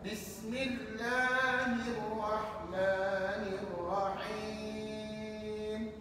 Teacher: huruf hamzah wasal tidak dibaca ketika wasal · Walaupun di sini ada 3 hamzah wasal, tapi ketiga-tiganya tidak dibaca.